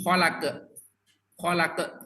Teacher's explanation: oleh guru sebab seringkiali pantulan yang diucapkan ee dari huruf qqala akan melahirkan bunyi tambahan berupa Hamzah karena pantulan pantulannya ditahan tidak lepas